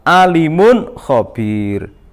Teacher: Ini dibaca jelas karena ada dhammah tanwin bertemu dengan huruf kha yang mengakibatkan bacaan ini harus dibaca jelas. termasuk bacaan idhar kholqi.